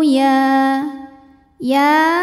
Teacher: hukum tajwidnya adalah Mad Thobi'i muqaddar sebab ya berharakat fathah berdiri cara bacanya Ya dipanjangkan dua harakat